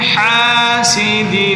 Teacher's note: حاسد، حا کو حلق سے نکالیں